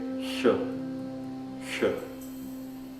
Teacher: a segunda consoante sibilante do sânscrito tem semelhança com a primeira, com o chã, só que a língua tem que ficar com a ponta virada um pouco para trás